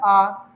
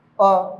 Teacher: अगर बस अ की बात करें तो सिर्फ इतने में ही बोल सकते हैं अ, लेकिन जब आ की बात करेंगे तो वहां पे क्या होता है? बड़ा मुंह भी खुलता है और समय भी ज्यादा लगता है। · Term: दीर्घ स्वर